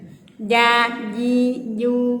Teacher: Ja itu tengah lidah katanya, tengah lidah Kak, tengah lidah. Nah, tengah lidah dengan langit-langit